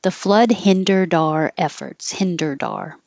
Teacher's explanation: the D will connect to the O and you'll hear it